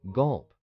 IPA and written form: ɡʌlp (gulp)